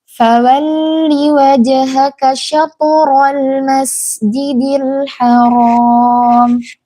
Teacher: Dalam kata syatoro ini tuh to-nya tebal, walaupun dia sukun tapi dia tebal. Karena di huruf tebal dan sebelumnya itu huruf yang berharakat fathah dan setelahnya juga fathah.